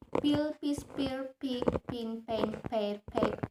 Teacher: Example voiceless bilabial stop sound P. · Bilabial sound formed by both lips coming together.